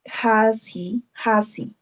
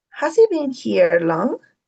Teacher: read and listen to how the sound h disappears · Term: h sound